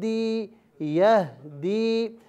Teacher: دال کا مخرج ناظرین و سامعین زبان کی نوک اور اوپر کے دانتوں کی جڑ ہے